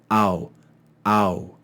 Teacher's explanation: the sound is made starting further back in the mouth with the mouth open and it moves forward and closes as you make that Upsilon sound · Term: diphthong